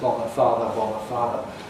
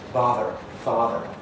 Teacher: in American English, they typically end up with the same sound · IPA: /ˈbɑːðɚ/ <bother>, /ˈfɑːðɚ/ <father>